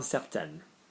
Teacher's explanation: when you add an E to an N, it makes the previous vowel go higher